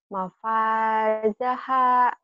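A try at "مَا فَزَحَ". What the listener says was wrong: Ha gede. Dadanya dipegang ada getar.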